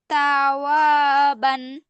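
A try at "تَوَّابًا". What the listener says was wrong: বা টান হবে না?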